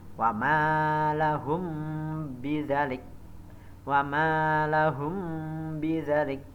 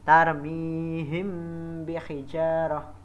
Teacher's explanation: ba jadi ada apabila De mim mati bertemu dengan huruf ba cara membacanya adalah harus samar-samar di bibir dan didengungkan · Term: Ikhfa Syafawi